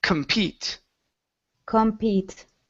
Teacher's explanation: So our stress is at the end of the word. So because of that, since we have the com at the beginning, we do not pronounce it compete, but it is compete.